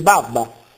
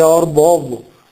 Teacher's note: spesso per assimilazione più che sentire barba si sente Babba anziché orbo Ovo